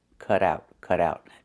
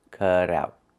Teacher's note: The T in cut changes to a fast D because it's between vowels.